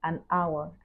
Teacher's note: though the word hour start with a consonant letter H but the H is silent in this case first sound is a viral so we cannot